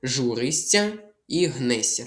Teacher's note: Передаємо тут я як ся м'який подовжений звук с.